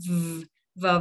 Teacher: âm v đẩy hai răng cửa chạm môi dưới nè